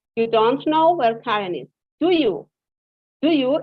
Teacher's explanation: do you is in a rising intonation here and it's a real question